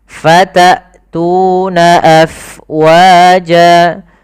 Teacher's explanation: Kemudian hamzah fatatuna, jelaskan suara hamzahnya karena dia punya sifat yang mencolok, yaitu jahar dan syiddah